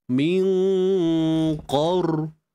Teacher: kita kena tebalkan dengan mengangkat bahagian pangkal lidah kita. Min qor, angkat pangkal lidah. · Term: qaf